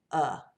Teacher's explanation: it's right there in the center right in the mouth your mouth is very relaxed your mouth it's kind of halfway open your tongue is not really doing anything it's just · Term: schwa